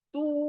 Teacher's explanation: पेश के बाद वाव मद्दा खींचना है जल्दी नहीं पढ़ना है